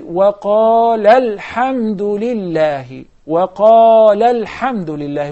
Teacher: If we connect it, then we drop the alif, and we say, وَقَالَ الْحَمْدُ لِلَّهِ وَقَالَ الْحَمْدُ لِلَّهِ.